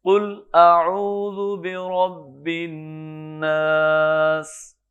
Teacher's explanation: قل قاف کو بھی پر کریں